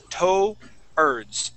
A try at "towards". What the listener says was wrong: Let's pronounce that D at the end.